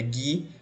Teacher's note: Você não pronuncia o som do U, portanto, ele vale por um dígrafo.